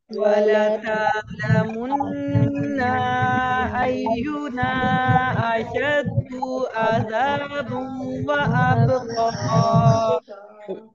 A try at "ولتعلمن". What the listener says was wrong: वलतअलमुन्न, इसमें भी नून की जबर को आपने खींच के नहीं पढ़ना है, वलतअलमुन्न नहीं है ये, वलतअलमुन्न अय्युना अशद्दु अज़ाबा वअबक़ा